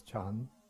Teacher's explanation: But then they dropped, to make it one syllable, they dropped the na, so it just becomes chan.